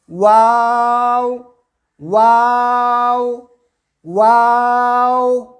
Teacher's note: دونوں ہونٹوں کو گول کرتے ہوئے اور درمیان میں تھوڑا مد کریں گے، کھینچیں گے، اور پھر آخر میں دونوں ہونٹوں کو گول کریں گے اور کہیں گے واو واو واو۔